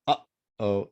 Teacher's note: So it's like a glottal stop.